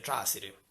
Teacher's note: è andato a finire a essere trasiri, appunto senza la nasale come abbiamo detto prima, che precede la S